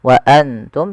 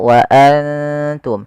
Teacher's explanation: Wa antum ada bacaan ikhfa sebagaimana tadi fa anjainakum, itu kita samarkan nunnya kepada huruf ta dan ditahan 2 harakat. Bukan hanya sekedar wa antum, tapi dia wa antum ditahan.